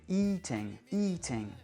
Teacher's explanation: C'est-à-dire que eat est un verbe d'une seule syllabe lexicale, donc on va bien faire un i long, eat. Et si je rajoute -ing, le -ing n'est pas accentué. Donc ça fait eating, eating.